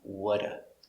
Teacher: Not what do, but whata. The T kind of disappears. We pronounce it with the D sound. Whata. Not do, because do is not stressed.